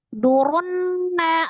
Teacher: ada ro, dhamma dibaca dengan tebal atau tafkhim bertemu dengan alif lam syamsiyah ditandai dengan tasdid di huruf nun maka langsung ditasdidkan idgham samsi runna nun tasdid wajibul ghunnah nun musaddadah ya.